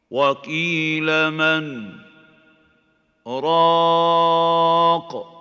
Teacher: the sakt wajib on the noon is preventing idgham. وَقِيلَ مَنْ رَاقٍ.